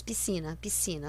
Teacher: todos falamos piscina, piscina, como se nem houvesse esse S.